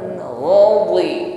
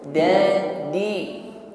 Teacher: Ghain tafkhim ya, tebal. Dhi juga diucapkan dengan tebal. Jadi bukan sekedar di.